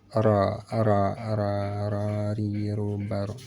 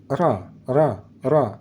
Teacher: Huruf ra termasuk huruf lisan ataupun huruf di bagian lidah. Cara membaca huruf ra, ujung lidah bertemu, hampir bertemu juga boleh dengan langit-langit depan di atas pangkal gigi. Ujung lidah di atas pangkal gigi, ra.